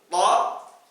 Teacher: Maka memang huruf ini tidak ada padanan hurufnya dengan bahasa kita. Huruf to, mulutnya terbuka, bunyi o-nya dari pangkal lidah yang terangkat.